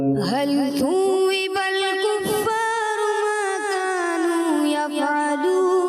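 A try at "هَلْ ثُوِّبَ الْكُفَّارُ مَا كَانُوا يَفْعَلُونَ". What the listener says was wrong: थोड़ा सा फा में कलकला महसूस हुआ, दोबारा दोहराएं, कलकला ना हो।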